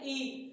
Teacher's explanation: और ये लघु स्वर है, ये आवर्तुल है, इसका उच्चारण करते समय हमारा ओठ गोल में नहीं हो रहा, ई फैल जा रहा। आवृत्तामुखी है, क्योंकि वृत्त के आकार का नहीं हो रहा, और इसका उच्चारण स्थान तालु है, इसलिए यह जो है तालु स्वर कही जाती है। · जब हम ई का उच्चारण कर रहे हैं ई, तो हमारी जीवा ऊपर की तरफ मुड़ जा रही है, तालु में स्पर्श कर रही है, इसलिए इसे तालु स्वर भी कहते हैं